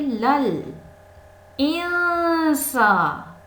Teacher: یہاں پہ نون ساکن کے بعد سین آیا ہے، یہاں پہ ہم احفا کریں گے